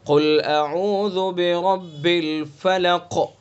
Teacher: اس لیے کہ را کے اوپر زبر ہے، اس لیے را کو پر پڑھیں گے. اور فلق کا جو قاف ہے اس کو پر بھی کریں گے، اس کے اندر قلقلہ بھی کریں گے